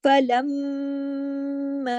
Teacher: मीम मुशद्दद है, काफी लंबा गुन्ना होगा, उसका नाम है अकमल